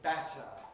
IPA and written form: ˈbætə (batter)